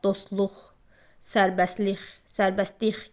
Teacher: Sonu s-t, ş-t, f-t, x-t samit birləşmələri ilə bitən sözlərdən sonra samitlə başlanan şəkilçi və ya söz gəldikdə t tələffüz olunmur. Məsəl üçün, dostluq sözündə dostluq, sərbəstlik, sərbəstlik kimi tələffüz olunur.